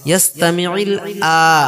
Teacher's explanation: খাড়া জাবরের জন্য এখানে একালি পরিমাণ টান হবে।